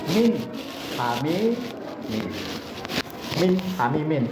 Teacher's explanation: Contoh irhar halqi min ham nun matinya jelas dibaca n-nya ya